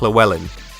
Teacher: imagine it's a TL sound rather than an LL sound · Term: double L sound